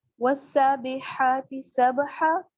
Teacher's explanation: یہاں پہ سین اور ہا پہ الف مدہ ہوگا اور سبحا با پہ قلقلہ ہوگا. با حروف قلقلہ میں سے ہے.